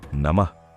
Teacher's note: మధ్యలో నమః అన్నప్పుడు అక్కడ విసర్గ ఉంది. కాబట్టి పలికేటప్పుడు నమః అని ఒక చిన్న గాలిని వదులుతూ